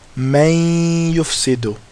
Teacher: So we would say, may yufsidu. So basically, we're putting the noon into the ya. It's disappearing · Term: idgham with ghunna